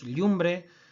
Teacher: la palatalización de la L inicial del latín en palabras patrimoniales